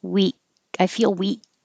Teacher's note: You don't have to release the K.